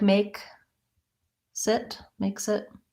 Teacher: make sit makes it there's not a big break there so it's just a natural way of linking the words because the next word starts with a vowel